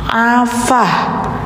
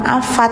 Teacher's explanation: Jadi kalau ada ta bulat, kalau mau diberhenti dan mau dimatikan, suaranya enggak ta lagi, tapi berubah menjadi suara ha. Jadi bacanya afah gitu, bukan afat ya.